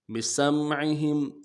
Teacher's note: سمعہم میں عین کو واضح کریں گے، ہم میں میم ساکن غنہ کریں گے